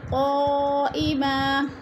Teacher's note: قا میں مد متصل ہے، 4 الفی مد ہے، 4 الف کے برابر ہم نے اس کو پھر کھینچ کر پڑھنا ہے